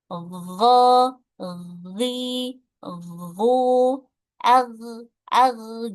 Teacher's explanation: huruf ghain ini memiliki sifat rokhawah, yaitu mengalir. Ya, jadi cara membacanya harus dialirkan, tidak boleh dipantulkan.